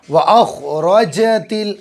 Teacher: و اخرجت، را پر کرو، جیم اچھے سے نکالو، زبان کے بیچ کو تالوے سے چپکا لیں گے اوپر